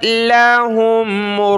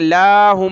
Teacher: लाम को खींचना नहीं है, लाहुम नहीं बल्कि लाम ज़बर ला, हा मीम पेश हुम।